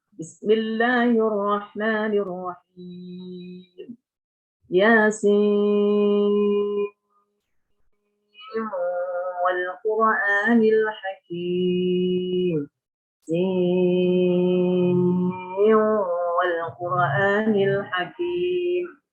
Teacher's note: tetap lazimnya itu tetap walaupun tadi idghamkan dengan wal Quran, tetap harus panjangnya 6, nggak bisa dikurangi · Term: panjang 6